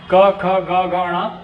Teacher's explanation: क वर्ग के जितने भी वर्ण है क ख ग घ ण उन सभी का उच्चारण कंठ से होता है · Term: कंठ व्यंजन वर्ण